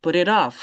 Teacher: If the T is in in the middle of two vowels, it sounds like a duh. Sounds like a D.